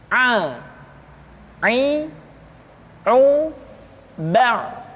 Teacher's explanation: Selanjutnya pengucapan huruf A dikeluarkan dari tengah-tengah tenggorokan seperti kita mengucapkan huruf H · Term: huruf Ain